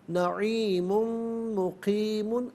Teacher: یہاں ملا کر پڑھنے کی صورت میں میم پر دو پیش کی تنوین ہے، اسے مقیمن کی میم کے ساتھ ملا کر میم کی آواز کو غننے کے ساتھ ادا کریں گے۔ نعیم مقیم، اب یہاں وقف کریں گے تو مقیم پڑھا جائے گا۔